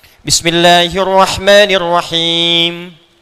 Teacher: anda baca Alfatihah kan ujungnya mim tuh rata-rata dengan Nun itu selain diucapkan di bibir ya dari lisan ke bibir mesti ada dengung ke ke hidung sedikit